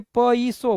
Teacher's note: માનો કે પ યસો આપણે નથી બોલતા, એને આપણે બોલીએ પ ઈસો બોલીએ છીએ. એટલે ય જે છે એના સ્થાને કોઈ સ્વર રિપ્લેસ થાય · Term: અર્ધસ્વર